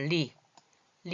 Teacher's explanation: 혀가 말려서 이 천장의 혀 끝이 천장에 붙으면서 요 옆으로 소리가 나가요.